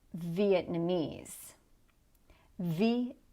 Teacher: So there is a small stress on the first syllable.